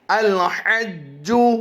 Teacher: اس وقت آپ اپنی اسکرین پر 2 لفظ جو دیکھ رہے ہیں پہلے کی ادائیگی کریں گے. الحج، جیم حروف قلقلہ سے ہے اور مشدد ہے. جماؤں کے ساتھ قلقلہ ہوگا.